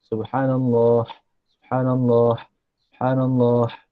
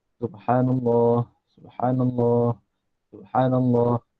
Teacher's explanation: Bunyikan ha di belakang. Jangan bunyikan dengan ha pedas. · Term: ha bulat